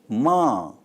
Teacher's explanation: The concluding letters of this group is ma is voiced by labial nosal in telugu produced by closing both lips and allowing air flow through the nose while vibrating the vocal cords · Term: voiced bilabial nasal